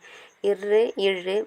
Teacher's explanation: மேல்வாயை நாக்கின் நுனி தடவுவதால் பிறக்கின்றது